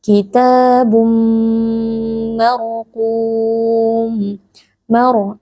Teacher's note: mim tanwin yang bertemu dengan huruf mim hukumnya adalah Idam bunah kita memasukkan bunyi tanwin ke dalam mim lalu kita dengungkan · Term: idgham bi gunnah